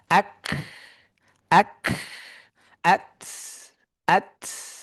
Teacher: সাকিন কাফতায়ের ক্ষেত্রে সাকিন অবস্থায় হালকা বাতাসটা পাওয়া যেতে হবে